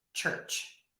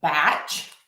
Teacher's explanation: the T and the SH sounds put together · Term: CH sound